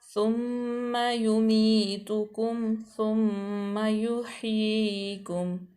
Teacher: उसके बाद है तुम, मीम जो है वो इदगाम है, तो मीम मुशद्दद है, तो इसलिए इस पर गुन्ना किया जाएगा